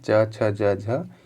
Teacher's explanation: इन सभी का उच्चारण दोस्तों ये तालु से इसका उच्चारण होता है। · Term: तालव्य वर्ण